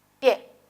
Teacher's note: la que suena más es la E. Pie, la I casi no suena. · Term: diptongo